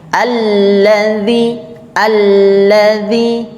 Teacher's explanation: kalau ada tasydid dibacanya tidak pakai tasydid misalnya alladzi dibaca alladzi alladzi harusnya ditekan setiap tasydid itu Ditekan